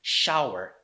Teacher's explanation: this is SH sound which is post alveolar and voiceless